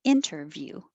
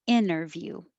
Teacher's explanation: You can keep the T, interview, or get rid of the T and say interview.